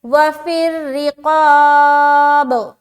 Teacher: राय मुशद्ददा के नीचे ज़ेर है तो इसको हम बारीक रखेंगे · तो जब हम पढ़ेंगे वफिर रिक़ाब, उसके बाद क़ाफ अलिफ ज़बर क़ा, अलिफ मद्दा करेंगे और 1 अलिफ के बराबर खींचेंगे, लिहाजा अलिफ भी मोटा रहेगा आखिर तक